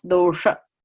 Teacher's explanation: dosha with the retroflexed S